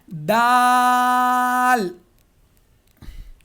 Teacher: زبان کی نوک اور سامنے کے جو 2 دانت ہیں اس کی جڑ کو جب لگے گے تب دال نکلے گا